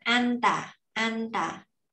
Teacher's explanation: Thì nó có phát âm cho mình đúng là chữ chữ an. Rồi chữ ta ở đây là có hai chữ tờ, mình sẽ đọc căng lên